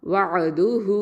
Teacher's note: ஹ தம்மா வாவ் சகிரா ஹூ, 2 ஹரக்கத்தை நீட்டுறோம், வஅதுஹு. அடுத்தது மீம் ஃபத்ஹா ஃப சுக்கூன் மஃப்.